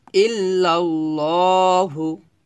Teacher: ল মোটা করতে হবে, কারণ লফজল্লার লামের ডানে জবর আসছে, মানে এই লফজল এটাকে বলা হয় লফজল্লার লাম, এই লামের ডানে যদি জবর আসে তাহলে ল বলতে হয়।